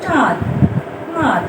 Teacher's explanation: এই 5টি বর্ণ এবং অনুস্বার ও চন্দ্রবিন্দু যে বর্ণের সঙ্গে মিলিত হয় সে বর্ণে গ্রথিত ধ্বনি উচ্চারণের সময় ফ ফুসফুস নিঃসৃত বায়ু মুখ বিবর ছাড়াও নাসারন্ধ্র দিয়ে বের হয়, অর্থাৎ এগুলো উচ্চারণে নাসিকার সাহায্য প্রয়োজন হয়, তাই এগুলোকে বলে নাসিক্য ধ্বনি।